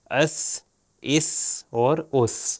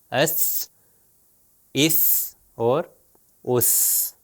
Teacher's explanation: ہم نے آپ کو بتایا کہ سا جو ہے بالکل ذال کی طرح اوپر والے اور نیچے والے دانتوں کے درمیان میں زبان تھوڑی سی باہر آئے گی اور اس کا تلفظ ہوگا سا. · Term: 3 نقطے والا سا